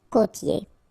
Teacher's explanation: here you get this O, accent circumflex. You tend to insist a little bit more on it, so it's a bit lower.